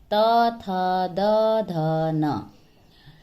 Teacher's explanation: त वर्ग दंत से उच्चारित होते हैं